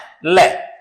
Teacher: को टच करने के बाद हवा है वो जीभ के आरपार निकलती हुई नजर आएगी जीभ के आरपार निकल र आएगी उसको बोलते हैं पार्श्विक व्यंजन